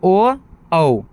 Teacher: ओ और औ जो कंठ ओष्ठ से निकलता है। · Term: कंठोस्थ्य